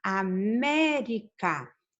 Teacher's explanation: A sílaba tônica está aqui em me